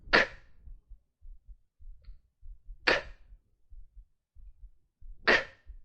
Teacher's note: To make the K sound, you have to remember it is a quiet sound. Keep your mouth open and the back of your tongue up.